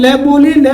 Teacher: देखिए आप ले बोलोगे तो आपको ये लगेगा कि आपका जो जीभ का जो भाग है वो मसूड़े को, दांतों के मसूड़े के टच होता है। तो ले जो है वो क्या कहलाता है, पार्श्विक व्यंजन कहलाता है।